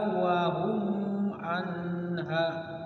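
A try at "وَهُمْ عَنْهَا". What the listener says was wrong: Wa hum anha. Jangan ditahan. Izhar syafawi. Wa hum anha langsung.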